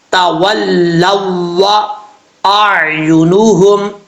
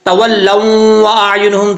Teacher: اگر کوئی پڑھتا ہے تولوا اعینہم تو یہ غلط ہے، لیکن ان کو سمجھ نہیں لگتی، وہ سمجھتے ہیں کہ یہاں پہ غنہ ہے، لیکن غنہ ہے نہیں، صرف لام کو واو سے ملانا ہے